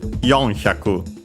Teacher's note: simply accented on the first syllable. I'd say in this case simply before the hyaku.